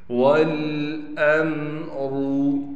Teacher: वाव को लाम से मिलाएंगे, इसके बाद हमज़ा को मीम से मिला देंगे बग़ैर गुन्ने के, गुन्ना नहीं करना। रा को मोटा करके पढ़ेंगे।